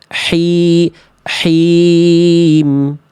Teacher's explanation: H kecil nafasnya atau ada yang bilang juga H pedas itu karakter nafas yang mengalir lebih berbisik